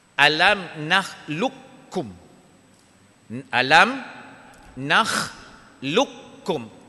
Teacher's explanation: Qaf tak ada dah. Masuk kaf. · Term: Idgham mutaqa ribain